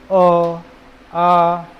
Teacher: सब कंठ पे ही बल पड़ेगा